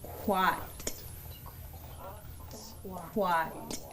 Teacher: we're going to round our lips and then we have a glottalized t so we're going to force that sound · Also, the reminder that this K is coming from the front of our mouth.